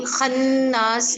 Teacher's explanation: नून के ऊपर गुन्ना होगा क्योंकि यहाँ पे तजदीद है